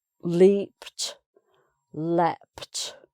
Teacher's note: a verb ending P, even when it's written ed, is pronounced leapt with a T sound